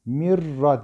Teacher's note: idgam bilagunnede mirra diye genizden ses getirmeden tecvidimizi yaparız, şeddelemesini yaparız.